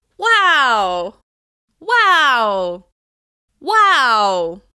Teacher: The higher pitch on this word signals enthusiasm for what I heard.